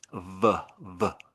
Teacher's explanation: you use your lower lip touching up against your upper teeth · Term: V sound